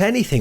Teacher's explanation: the word anything has the stress pattern stressed unstressed unstressed but no schwas sound this is because the shortened e and